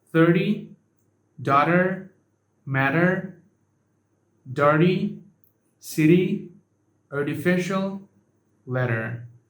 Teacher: In some position, it can be pronounced as a flap T, which sound like a sharp D.